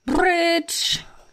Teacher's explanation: Before the show, I sent two examples of the tongueless voice bilabial trill. So that's no tongue and it's voiced and you use both lips